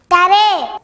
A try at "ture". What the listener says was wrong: You tried well, but it is pronounced as Ch. Ch. Here, the letter R is not pronounced.